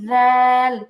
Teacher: জিহবার আগা উপরে দুই দাতের আগার সাথে লাগবে নরম করে আর এই জালটাকে ঠোট গোল করে একটু মোটা করে